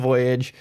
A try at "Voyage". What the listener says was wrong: You're like hitting it in a way where you're putting the I and J in there and I hate it.